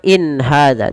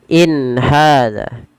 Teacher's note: Tidak ada penahanan in ya, tapi dia jelas saja. In hadza. Kemudian balafal ha ada mad tabi'i. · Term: izhar halqi